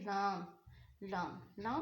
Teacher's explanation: जब जुबान का किनारा कुछ हिस्सा हाफ और ऊपर नीचे के दांतों के मसूड़े यानी कि जुबान का किनारा और ऊपर नीचे के मसूड़ा आपस में लगते हैं तो लाम अदा होता है